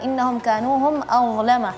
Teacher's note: Huruf dha yang perlu diperhatikan adalah dha-nya ya lidahnya keluarnya sedikit ya.